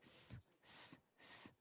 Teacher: Dá para máximo para você alongar, mas ele não sai forte, né? Ele não é vozeado, ele não sai forte.